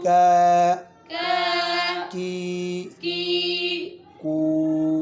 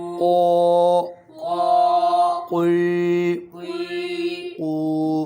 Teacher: کاف اور قوف یعنی موٹا اور باریک سے فرق کرے